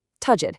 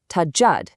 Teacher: You hear that little hold, that emphasis on the D? Tajad. That one little pause completely changes the word. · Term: shadda